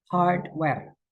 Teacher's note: Jadi kalau ada dua kata yang digabungkan jadi satu, penekanannya itu selalu di kata pertama. Misalkan tadi kata hardware, yang ditekankan adalah kata hard-nya.